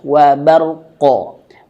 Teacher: Getarannya sedikit jangan berlebihan. Baru qofnya pantulkan.